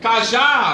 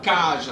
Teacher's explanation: você vê que a última sílaba é a sílaba mais forte, a sílaba tônica